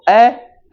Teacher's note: जीवा का जो बीच वाला हिस्सा है जो जीवा का मध्य वाला भाग है वह थोड़ा सा ऊपर की तरफ उठता है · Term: मध्य स्वर